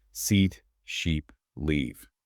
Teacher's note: And now for the long E, the I sound. Here, Your lips should pull back a bit, almost like a small smile. Your tongue is higher in your mouth and it's more tense.